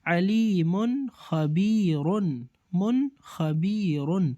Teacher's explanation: نون میں voice break نہیں ہو رہی ہے، کنٹینیوسلی پڑھا جاتا ہے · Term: اظہار